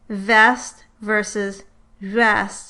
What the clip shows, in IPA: vɛst˭ vs. βɛst˭